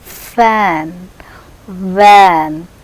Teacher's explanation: Lower lip is brought very near to the upper front teeth. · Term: labiodental